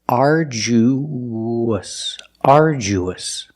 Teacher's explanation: when you link the uh to the us, there's a sound that links the vowels. It's like a w. It's the www sound. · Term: the w sound